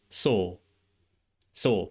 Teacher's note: It would be similar. It's non-rhotic and the vowel is different than mine, too.